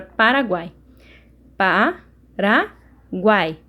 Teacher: e quando eu faço a separação elas ficam juntas né então são três vogais juntos na mesma sílaba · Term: tritongo